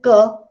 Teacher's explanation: So when I say k, then you can also feel, when you produce the sound k, that the back of the part, your back of the tongue is touching your soft palate